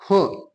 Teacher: ये अघोष भी है और महाप्राण भी है